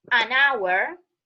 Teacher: So here the H is silent and it sounds like O.